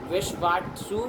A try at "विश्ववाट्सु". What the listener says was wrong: तुम काहे ये दो व नहीं बोल पाते हैं?